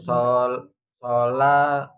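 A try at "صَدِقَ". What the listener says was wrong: Bukan. Dal itu dah.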